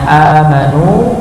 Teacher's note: amanu, maka hamzahnya dibaca dua harakat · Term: mad badal